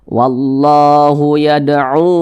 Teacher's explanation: Nah, yad'u mad jaiz munfasil, panjangnya 4 hingga 5 harokat.